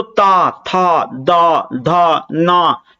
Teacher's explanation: जीभ जो है ना दांतों से टकरा रही है